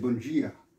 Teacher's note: Mais le D devient un G